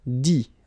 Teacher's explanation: You don't pronounce the final T.